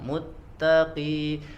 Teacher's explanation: walaupun huruf qaf ya ketika harokatnya kasroh maka ketebalannya berkurang ya, tidak seperti harokat fathah atau dhammah. Kalau ki agak sedikit berkurang.